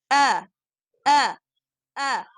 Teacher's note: Let's remember what is the articulation point for the hamza. It comes from the deepest part of the throat.